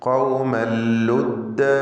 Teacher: ഖൗമൻ എന്ന തൻവീൻ ശേഷം ലാമിലേക്ക് തൻവീനിനെ പൂർണ്ണമായും ലയിപ്പിച്ച് മണിക്കാതെ ഉച്ചരിക്കുക. ഇദ്ഗാം ബിഗൈരി ഗുന്ന.